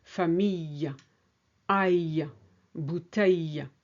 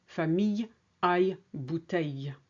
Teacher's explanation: Next is the ILL, which is the glide y.